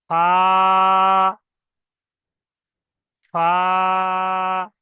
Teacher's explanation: ফা, দুটো ঠোঁট দিয়ে বাংলা যেমন বলে ফ, ফ বললে হবে না, এই উপরের দাঁতটা নিচের ঠোঁটে এসে মিলবে। ফা, ফা, শুধু উপরের দাঁতটা নিচের ঠোঁটে এসে মিলবে।